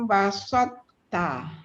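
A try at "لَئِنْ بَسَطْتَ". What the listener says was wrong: Dekat to dengan ta tu betul. Sin tu kena nipiskan. Laim basalta. Basalta.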